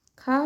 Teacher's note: खा महाप्राण और कंठ है, ये भी सही है।